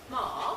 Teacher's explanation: read from this a voiced bilabial nasal we've got one with a little zero diacritic which means no voicing take the voicing out which gives us our ma so we've got our ma ma